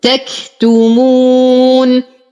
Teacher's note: نقف على النون بالبينية وقبلها حرف مد إذن هو مد عارض للسكون يمد بمقدار 2 4 6 حركات